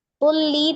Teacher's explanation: Diidghamkan atau ditasdid ke huruf lam, tapi tidak disertai dengan dengungnya. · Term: idgham bila gunnah